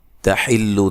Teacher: تا کو باریک پڑھنا ہے، لام کو لمبا نہیں کرنا